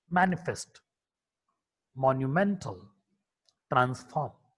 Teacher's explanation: M. M is a voiced bilabial nasal consonant.